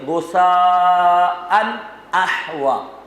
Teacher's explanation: غصاءً میں نون تنوین ہے جو کہ در حقیقت نون ساکن ہے، اس کے بعد کیا ہے؟ حمزہ۔ اب یہاں پر بھی غنہ نہیں ہوگا۔